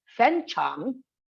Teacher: a falling and rising both are deep low dipping toe but two tone threes are not possible hence the first syllable of tone three will be changed to tone two